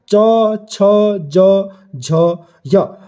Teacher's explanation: पांच जो होते हैं वो तालू की सहायता से बोले जाते हैं तो कौन-कौन से होते हैं वो च छ ज झ य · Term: तालव्य